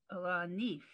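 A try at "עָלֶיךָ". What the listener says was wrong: That's a yud.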